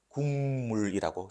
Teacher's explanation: 표기대로 발음하지 않죠. 비음화를 시켜서 이렇게 발음합니다.